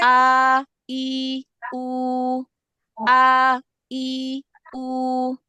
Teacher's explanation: Oh Jangan ditutup pita suaranya Jangan diakhiri dengan menutup pita suara